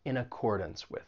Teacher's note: And keep in mind that final syllable in accordance, even though it's spelled D-A-N-C-E, you're not going to say dance. It's going to have that schwa sound. It's going to sound like dunce.